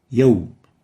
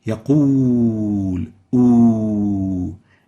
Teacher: the second waw, the waw الغير المادية, is a bilabial letter compared to the first waw, which is a vowel.